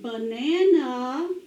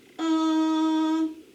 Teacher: it's the uh sound of a on an unaccented syllable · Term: schwa a